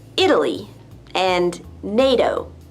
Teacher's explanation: The T is pronounced D when it's between two vowel sounds